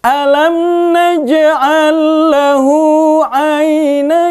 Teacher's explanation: kita lanjut alam najaal Lawu alain in nine itu namanya madylin kalau dilanjut tidak panjang tapi kalau di waqaf dia dibaca panjang 2-6 harokat